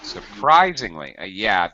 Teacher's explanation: the stress is on rise.